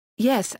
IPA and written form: ˈjɛs (yes)